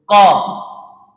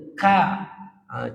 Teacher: huruf qaf ni dipanggil aqsal lisan, penghujung ataupun pangkal lidah kita belakang.